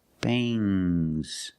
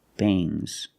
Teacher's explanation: When you have S after NG, it makes the nasal sound but it also makes a little G sound, but not a hard, strong G.